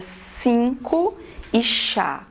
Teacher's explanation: Se você observar o s, não vibra aqui, tá? E se você observar o sh, também não vibra. Por quê? Porque são sons surdos. · As cordas vocais ficam separadas, tá? A glote fica aberta e o ar que vem dos pulmões passa sem vibrar, então não tem vibração nenhuma.